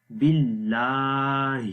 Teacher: زبر کو بھی ایک الف کے برابر لمبا کرتے ہیں، باللہ۔ آخر میں ہا کی آواز ہے جو کہ اگین گلے کے سب سے نیچے والے حصے سے پڑھی جائے گی